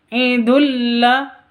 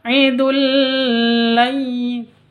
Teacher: tanwin bertemu dengan lam cara bacanya masuk ke lam langsung idulla tanpa dengung idulai seperti itu jangan dibaca Idul laai